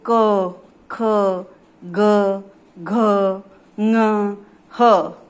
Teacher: जिन वर्णों का उच्चारण कंठ से होता है उन्हें कंठे कहते हैं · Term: कंठ व्यंजन